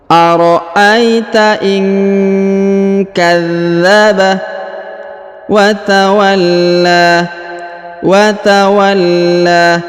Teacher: Huruf dha ditahan dan ditekan karena terdapat tanda tasdid.